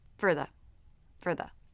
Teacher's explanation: the tongue tip was through the teeth for just a brief moment